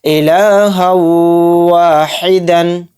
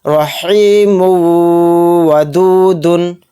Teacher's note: یہاں پر ہم ادغام کریں گے یعنی تھوڑی دیر آواز کو روک کر چلیں گے، غنہ کریں گے۔ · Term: ادغام واو